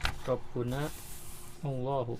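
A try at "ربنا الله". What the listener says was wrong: Ya, Rabbunallahu. Kita baca disambung jadi Rabbunallahu gitu.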